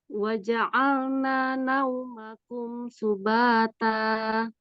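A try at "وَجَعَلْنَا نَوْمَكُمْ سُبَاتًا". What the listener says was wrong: Nanya kurang 2 harokat ya. Jadi tadi masih 1 dikit gitu. Wa ja'alna naumakum subata.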